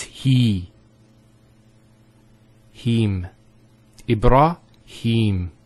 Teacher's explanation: here is the elongation of the e sound